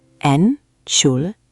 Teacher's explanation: 4 syllables. The emphasis is on the second one.